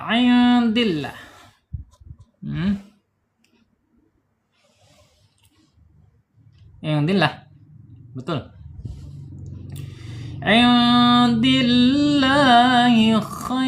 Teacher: lam jalalahnya wajib dibaca tarqiq ya, atau tipis. Tidak boleh tebal, tidak boleh indillah, nggak boleh ya.